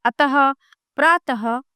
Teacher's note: विसर्ग का उच्चारण आधे है के समान होता है।